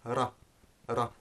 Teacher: making a series of quick flaps against the upper front part of the mouth, which is known as the alveolar ridge